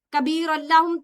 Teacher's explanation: कबीरुल्लाहुम तनवीन के बाद लाम है, इदगाम बगैर गुन्ना के होगा।